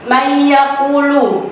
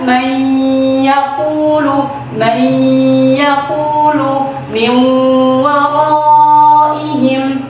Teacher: suaranya masih dari mulut semuanya, belum melibatkan hidung.